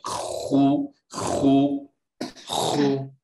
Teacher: Not khu, don't gargle it. You gargled it a little. Straight up scratching.